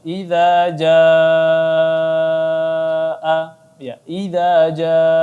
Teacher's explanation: ini mad wajib muttasil, maka kita baca 4 sampai 5 harakat